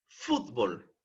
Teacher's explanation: cuál de las dos sílabas es la que lleva el mayor impulso de voz fútbol evidentemente la sílaba fut